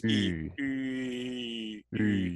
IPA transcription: y